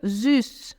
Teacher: O S tem som de Z, o U com trema tem som de U, boca de U falando I. Então fica süß.